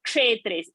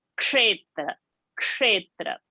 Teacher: So the starting is like ksh sound. The ka has to be heard, otherwise it will sound like a plain sh. It is a conjunct, so there is a pressure and there is a more force. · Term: ksha pronunciation